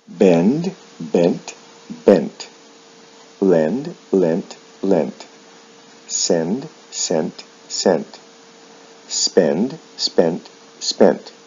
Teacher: with verbs like send there is no vowel sound shift in the past and the past participle but the final d sound is changed to a t